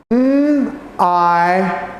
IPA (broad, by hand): aɪ